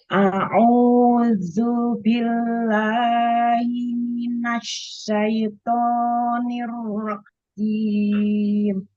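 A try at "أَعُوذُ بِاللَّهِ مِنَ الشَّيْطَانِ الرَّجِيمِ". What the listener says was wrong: Ya, matobi'inya dipendekin lagi.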